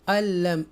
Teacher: इस नून को हम स्किप कर देंगे, नहीं पढ़ेंगे। ये जो ज़बर है ये इसके साथ लाम मुशद्दा के साथ मिलाएंगे, अल्लम।